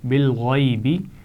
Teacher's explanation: غین کو موٹا پڑھیں گے اور اس کے اوپر زبر ہے اور اس کے آگے یا ساکن ہے تو یہ لین بھی ہوگا